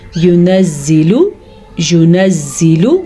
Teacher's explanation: लाम को लंबा नहीं करना